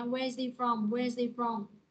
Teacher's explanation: nối với chữ hi phía sau, chữ hi á là nó sẽ bỏ chữ hờ luôn ha, đọc là where's he from.